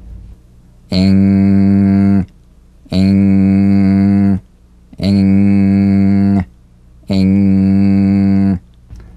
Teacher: So sing with the back of the tongue in contact with the soft palate. Back of the tongue to the soft palate. Vibration coming through the nose. Feel a twangy nasal resonance.